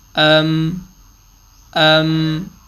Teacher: حمزہ میم زبر ام. میم ساکن پہ آدھا سیکنڈ آواز ناک میں آٹومیٹکلی چلی جاتی ہے